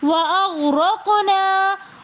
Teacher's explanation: یہاں پر ہم غین کے اوپر قلقلہ نہیں کریں گے، بلکہ اپنی آواز کو کنٹرول کر کے پڑھیں گے · وَأَغْرَقْنَا میں ہم غین کو بہت ہی معروف طریقے سے پڑھیں گے بغیر ہلائے وَأَغْرَقْنَا۔ قاف کے اوپر ہم قلقلہ کریں گے، لیکن قاف کے ساتھ ساتھ ہم نے غین کو نہیں ہلانا۔ اگر ہم پڑھیں گے وَأَغْرَقْنَا تو ہم نے غین کے اوپر قلقلہ کیا، جو کہ غلط ہیں۔